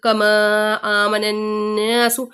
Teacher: الف مدہ کے بعد حمزہ دوسرے کلمے میں آ رہی ہے, مد منفصل. کما آمن الناس, نون مشدد کا غنہ, دین الف مدہ.